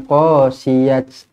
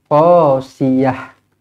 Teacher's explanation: ta marbutah bila berhenti dia akan jadi huruf ha matilah. Bukan berhenti dengan qasiyat, salah.